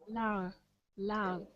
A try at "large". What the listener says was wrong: J. You got to get a J sound. J.